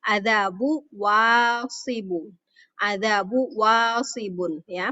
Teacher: Jadi ba-nya itu menjadi tipis, kemudian seperti tidak terbaca tanwin.